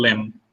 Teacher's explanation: the final pa and ba sound, they don't get uttered. Our, our actual utterance ends in ma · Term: elision